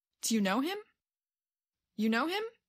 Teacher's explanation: did you hear how the voice went up toward the end of the question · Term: rising intonation